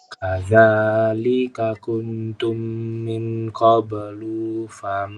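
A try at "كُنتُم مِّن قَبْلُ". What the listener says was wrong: Nah, lu-nya pendek. Lufa. Min qablu. Kuntum.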